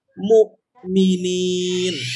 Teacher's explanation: Ketika ada hamzah mati di tengah, itu seperti kita ngerem mobil tapi tidak mantul.